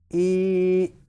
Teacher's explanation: تو اس کو 1 الف یا 1 سیکنڈ تک کھینچیں گے، کیونکہ یہاں پہ مدہ ہو رہا ہے تو اس کو ای اس طرح پڑھیں گے.